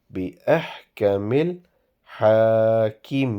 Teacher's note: Ha is prolonged and the rest of the alphabets are not prolonged.